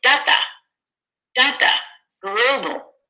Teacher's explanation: It's da-da, da-da, global, right? The first syllable is stressed more than the second syllable.